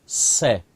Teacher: और जो तीसरा स होता है इसके उच्चारण में जीवा दांतों को छुएगी। जब जीवा दांतों को छुएगी तो वहां से सीटी निकलती है